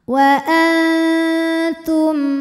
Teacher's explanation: ini dengungnya sedikit ya suara yang masuk hidung sedikit aliran suara yang keluar dari mulut masih banyak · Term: ikhfa Hakiki, ikhfa aqrab